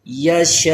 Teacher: آخر میں حمزہ ساکن باقی رہے گا۔ من قبل، وقف کی حالت میں پڑھیں گے تو لام کا پیش ختم ہو جائے گا، یہ جیم کس کی علامت ہے؟